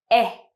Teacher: So your tongue is in the middle part of your mouth. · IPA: /e/